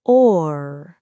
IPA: ɔːr